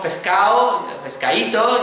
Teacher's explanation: Aquí en Andalucía decimos pescado, pescadito, ya no decimos pescado, pescadito, ¿verdad? Porque ese sonido D, que era un sonido fuerte, se convierte en débil, D casi ya no se percibe y desaparece